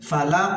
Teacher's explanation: ফালাক, এরকম ফালাক বলবো কারণ কফটা হচ্ছে কলকলার হরফ, আর আমরা জানি কফ তো বা জিম দাল, এই 5 হরফে যখন জজম হবে তখন কলকলা করে পড়তে হবে, অর্থাৎ একটু ধাক্কা দিয়ে পড়তে হবে